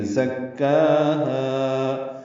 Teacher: صفیر کی آواز سے ادا کریں گے، کاف سے ملائیں گے، کاف اور ہا کو دو حرکات لمبا کریں گے